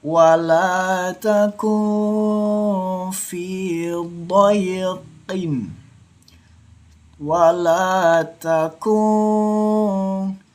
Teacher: Hati-hati, didengungkannya jangan sampai lebay membacanya, atau didengungkannya jangan sampai lebay. Harus didengungkan tipis. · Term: ikhfa syafawi